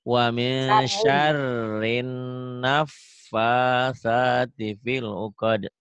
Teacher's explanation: Wa min syar, R-nya kayak ditahan.